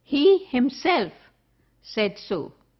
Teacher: personal pronoun he but being converted into an emphatic pronoun because the emphasis is on he